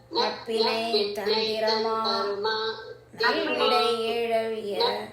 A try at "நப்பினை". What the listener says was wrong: நப்பினை. நப்பிண்ணை அல்ல, அங்க ஒரு இன் இல்ல, அதனால நப்பினை. நப்பினை தான் இருக்கு. நப்பினை தான்.